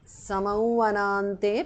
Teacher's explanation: samauvanante because of sandhi, anuswara changes to the nasal of va